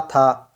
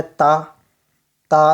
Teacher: तो था जो है ना ये महाप्राण हो गया, ता जो है आपका अल्प प्राण हो गया